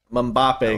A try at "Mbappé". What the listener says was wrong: Mbappe. It's a Mbappe, not Mbappe. So it's a short M, not a long. Not Mbappe. Mbappe.